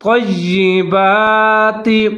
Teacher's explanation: جیسے کلوا من طیبات، تو کو موٹا کر کے پڑھنا ہے، آگے یا کے اوپر تشدید ہے، اس کے ساتھ ملا کے مضبوطی کے ساتھ پڑھنا ہے